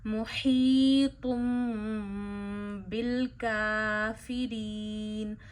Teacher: میم پڑھیں اور میم کی بھی آواز ناک میں لے جائیں، ایک انگلی جتنی ٹھہرائیں